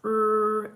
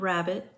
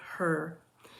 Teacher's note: R is a voiced palatal liquid. The sound for R is r, as in the beginning of rabbit and the end of her.